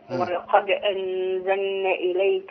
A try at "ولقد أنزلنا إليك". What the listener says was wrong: لا مدي بقى. أنزلنا. مدي شوية كمان، خليها عليكي.